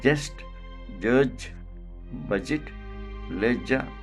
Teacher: so this sound is called palato alveolar voiced affricate